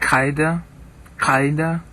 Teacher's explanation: you're doing a little click on the upper back of your throat before you say the Q sound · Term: cough